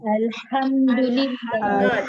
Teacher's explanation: Jadi kena sengaja pedaskan bunyi Ha pada Alhamdulillah.